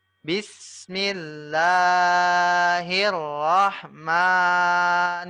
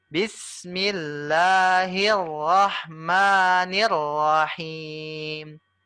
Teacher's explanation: kalau Rahman dengan Allah panjangnya Hanya dua harakat saja akan tetapi rahim himnya ini panjangnya harakat 3 sampai EMP harakat